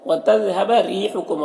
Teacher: وتذهب ريحكم، را کے نیچے زیر تو را کو باریک پڑھیں گے، اور یہاں پر یا مدہ ہے تو یہ سب کو ایک الف کے برابر کھینچیں گے۔ کم کے میم میں اظہار شفوی اور ایسے جلد پڑھنا۔